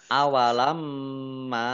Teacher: mim tasdid dibaca gunah atau mendengung ditahan 2 harokat. Mim fathah alif mat tobi'i, tetapi karena bertemu dengan huruf alif di kata yang berbeda maka menjadi mad jaiz munfasil.